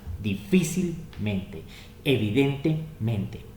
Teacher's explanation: hay acento en difícil, difícil, y acento en mente, en el men. En este caso, la regla nos dice que tomamos el acento de la palabra raíz, es decir, mente, dejamos el adverbio a un lado. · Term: 2 tipos de acento